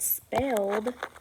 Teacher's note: if I say the word spelled, I hear d at the end without the id